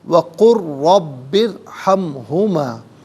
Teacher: را ساکن ما قبل با کے نیچے زیر تو را ساکن کو باریک کر کے پڑھیں گے